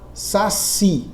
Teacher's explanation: na palavra Saci a sílaba tônica é o si ó a sílaba tônica é a última e a palavra saci